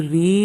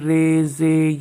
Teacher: زبر کو زیر کی طرف اور الف کو یا کی طرف مائل کر کے پڑھنا۔ امالہ کو اردو کے لفظ قطرے کی را کی طرح پڑھیں، یعنی ری نہیں بلکہ رے پڑھیں، جیسے اردو قاعدے میں رے زے یہ اس طرح جو ہے امالہ کر کے تمام حروف کو ادا کیا جاتا ہے۔